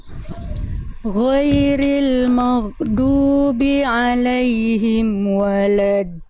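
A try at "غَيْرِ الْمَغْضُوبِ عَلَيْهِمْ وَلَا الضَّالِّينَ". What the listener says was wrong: Tinggal di huruf Di huruf di kalimat ghairi sampai waladdallin ini yang Bunda perlu sempurnakan adalah pelafalan huruf ghain. Huruf ghain dilafalkan dari tenggorokan paling atas atau tenggorokan paling luar atau ujung tenggorokan. Sifat suaranya hurufnya itu dia lemah. Itu ghairi.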